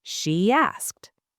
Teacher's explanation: She asked, a tiny Y sound appears. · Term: vowel to vowel linking